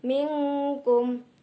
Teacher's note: Minkum, termasuk bacaan ikhfa hakiki karena nun sukun bertemu huruf kaf, dibaca mendengung